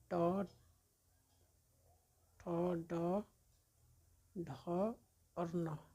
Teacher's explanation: ये सभी जो है मूर्धन्य या मूर्धा का उच्चारण करता है।